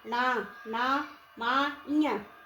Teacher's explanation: जैसे जैसे न ना मा ञ तो कैसे हो रहा है अगर हम नाक बंद कर ले तो ये हमारे वर्ण उच्चारित नहीं होंगे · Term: नासिका